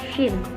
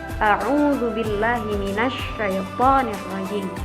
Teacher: ketika menyebutkan huruf shin ada angin gitu. Anginnya menyebar, shin. Nah, misalnya contohnya a'udzu billahi minasy syaithanir rajim. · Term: tafasyi